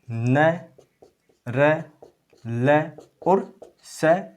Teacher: इनके उच्चारण में दांत का जो अग्र भाग है उससे उच्चारण होता है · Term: दंत मूल व्यंजन